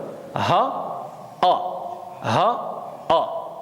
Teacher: 2 lettres qui vont sortir du fond de la gorge.